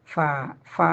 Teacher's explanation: തൊണ്ടയുടെ മുകൾ ഭാഗത്തുനിന്നാണ് അപ്പൊ അത് നന്നായി ശ്രദ്ധിച്ച് ഉച്ചരിക്കുക അടുത്ത അക്ഷരം ഫ മേലെ മുൻപല്ലും താഴെ ചുണ്ടിന്റെ നനഞ്ചാം ഭാഗവും അപ്പൊ പല്ല് ചുണ്ടിന്റെ മുകളിൽ തട്ടിയാണ് എന്ത് വരുന്നത് ഫ ഫ എന്നുള്ള അക്ഷരം · ഫ എന്നുള്ള അക്ഷരം വരുന്നത് പല്ലിനെ ചുണ്ടിന്റെ മുകളിൽ തട്ടിച്ചിട്ടാണ്